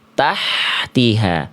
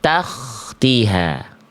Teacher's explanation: Kalau k ada keresek-keresek, kasarnya sedikit. · Kalau H kecil itu dia lebih lembut Bunda, dia lebih berbisik Bunda.